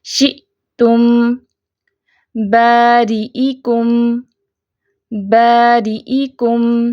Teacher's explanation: حمزہ جب ساکن ہوتا ہے تو جھٹکے کے ساتھ پڑھا جاتا ہے، تو ادھر ہم جھٹکے سے پڑھیں گے، شئتم باریئکم، باریئکم جزاء، جزاء۔